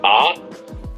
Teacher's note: the letter A, Ah, is in the back of the throat